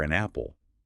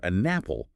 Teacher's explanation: with the N sound traveling right over to start the word apple. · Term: linked sounds